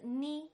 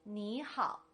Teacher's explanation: when i said knee on its own i used the third tone but when i said nihal the knee turned into a second tone